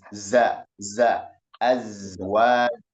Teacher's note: Kemudian berdasarkan aliran napas, sifatnya ini jahar, ya. Za ini jahar, jadi tertahan aliran napas, berdasarkan aliran napas dia jahar, berarti sebagian napasnya tertahan seperti itu. Jadi desisan tadi, suara yang tajam tadi itu bukanlah berdasarkan, bukan udaranya yang mengalir, tapi memang suaranya tajam.